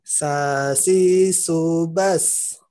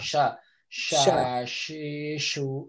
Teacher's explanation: fokusnya adalah tengah lidah ketemu langit-langit